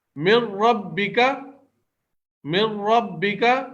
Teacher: نون ساکن کے بعد را جو آیا ہے اس پہ تشدید لگا کر نون ساکن کو پڑھا ہی نہیں جا رہا بلکہ من ربک پڑھا جا رہا ہے. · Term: ادغام بلا غنہ